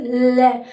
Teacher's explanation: ल का उच्चारण करते हैं तो जीभ तो ऊपर तालुक की या मसूड़ों के टकरा जाती है, वहीं पर रुक जाती है। जैसे ल तो जीभ तो ऊपर टकरा जाएगी, वहां पर स्पर्श कर जाएगी और उसके बाद जीभ के जो दोनों किनारे हैं वहां से वायु निकलेगी और तब वर्ण उच्चरित होगा। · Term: पार्श्विक